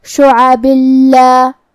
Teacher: دوسری والی آیت میں لام حروف الادغام بغیر غنہ میں سے ہے، تو ہم یہ تنوین کو لام میں ملا کے بغیر غنہ سے لیکن تشدید کے ساتھ یہ حکم کو ادا کریں گے